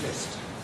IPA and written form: mɪst (It's)